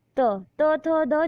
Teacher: त थ द जब भी आप देखेंगे तो दांतों पर जुबान लड़ती है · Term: त वर्ग